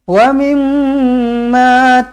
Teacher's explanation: mim sabdu di sini wajibul gunna, dengungkan dengan 2 harakat, rapatkan bibir di sini.